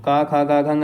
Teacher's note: क वर्ग कंठ ध्वनि से ही निकलता है